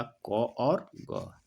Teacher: जिन व्यंजनों का उच्चारण में मुख से कम हवा निकले, ठीक है, उसको अल्प प्राण कहते हैं